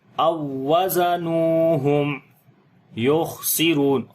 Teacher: یہاں پر جو ہے دوسرا واو پڑھا جائے گا او وزا، زا کو سخت پڑھیں گے، نون کو لمبا کریں گے، واو مدہ ہے